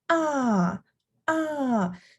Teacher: the fourth tone is the falling tone